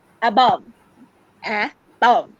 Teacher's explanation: We are putting all the emphasis on the second half.